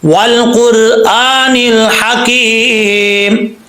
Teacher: واو کے بعد لام ہے، لام میں قلقلہ نہیں کرنا